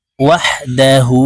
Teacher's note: এই হাকে আমরা এক আলিফ টেনে বলবো